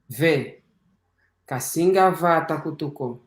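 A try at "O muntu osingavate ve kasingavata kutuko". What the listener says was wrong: Vogal longa, faz favor.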